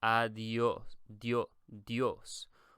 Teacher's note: whenever you have an I and an O next to each other, it creates almost like a Y sound. So you wouldn't really say adios.